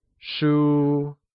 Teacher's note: is pronounced with a high level tone